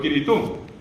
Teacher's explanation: Porque Cri, allí entró Kirito. Eliminamos la S porque no hay consonantes finales de sílaba y quedó Kirito.